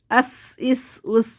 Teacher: दांतों से ज़बान बाहर आएगी